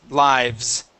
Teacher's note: That's going to be a voiced S.